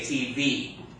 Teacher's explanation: Where do we put the accent when we pronounce the word TV? On the last syllable. We say TV. Now, if I hey, I got myself a TV.